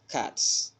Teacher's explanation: the plural marker is pronounced as a voiceless sound s if the last sound of the word is a voiceless sound. A voiceless sound is a sound that is produced when the vocal cords do not vibrate.